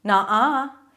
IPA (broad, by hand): nɑ: a: